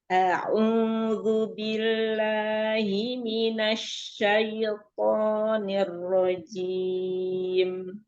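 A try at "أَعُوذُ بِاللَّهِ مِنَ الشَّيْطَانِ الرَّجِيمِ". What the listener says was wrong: Huruf ainnya ya, ainnya masih ada sedikit mengalir ke hidung ya.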